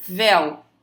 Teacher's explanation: Eu tenho primeiro a vogal e depois a semivogal. Ou seja, eu fui do mais forte para o mais fraco. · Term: ditongo decrescente